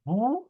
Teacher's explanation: বা ওয়া বি যদি ইকার দিয়ে উচ্চারণ করি বি যদি উকার দিয়ে উচ্চারণ করি তাহলে হবে বু বু জাস্ট প্রেসার এটা প্রেসার হবে এমন হবে না বু বার যেন ভাই না আসে